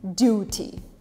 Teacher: You almost say it with an R. In British, it stays as a T